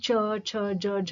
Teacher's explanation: स्वास वायु जब निकलती है पहले वो स्पर्श करती है फिर रगड़ खाकर बाहर निकलती है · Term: स्पर्श संघर्ष